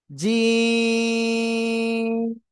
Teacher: জিহ্বার মাঝখান, তার বরাবর উপরে তালুর সাথে লাগবে, লাগিয়া শক্ত করে উচ্চারণ করব। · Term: জিম অক্ষরে